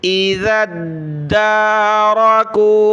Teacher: ज़ाल को आगे दाल के साथ मिलाया ज़ाल पर ज़बान निकालेंगे दाल पर तशदीद है तो इसको जमा कर सख्ती के साथ